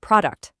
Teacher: The stress is on pro, which means that u in the second syllable becomes a schwa. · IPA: /ə/